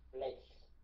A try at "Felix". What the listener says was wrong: Felix, đọc rõ ra như vậy, chỉ nghe chữ Lex thôi hả? Felix.